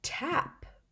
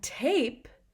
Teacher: changes the sound of the vowel in front of it so the a in tap had been an ah it had been the short sound but in tape it makes the long a sound it says its name all because we added that magic e